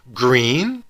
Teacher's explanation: To the teacher, a rising tone signaled a question